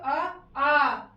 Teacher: अभी जब दीर्घ बोलेंगे तो आ देखिए कहाँ जा रहा है, पश्च स्वर में जाता है